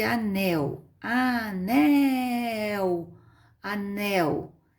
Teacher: é a última sílaba forte Então ela chama oxítona